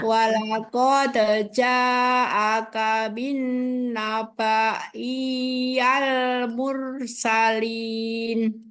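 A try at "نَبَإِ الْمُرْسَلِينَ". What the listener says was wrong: Ini emang harokatnya fathah ya? Kok nabaiyal?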